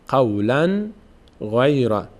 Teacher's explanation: اینجا تنوین هیچ اتفاق روش نمیفته، نون همونجوری که است ادا میشه، نه از بینی ادا میشه نه عوض میشه به حرف دیگری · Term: اظهار